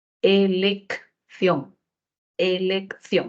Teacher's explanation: la primera C tiene valor sonoro de K y la segunda c tiene valor fricativo por lo que le ponemos la z elección elección nosotros no